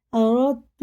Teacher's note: ان اردت تو دیکھ دال پہ جزم ہے، تا میں تشدید ہے تو دال کو تو ملائیں گے ہجے میں، را میں بالکل اس کو نہیں پڑھیں گے، را کو تا میں ملا کے پڑھیں گے. را دال تا زبر رت، رت دال بالکل نہیں آ رہا اس میں، پڑھا ہی نہیں جائے گا.